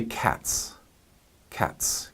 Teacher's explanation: a straight T it's not a straight s it's like if you say cats cats you get the T and the S together as one sound